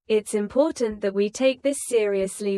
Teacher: it's important that we take this seriously with a lower steady tone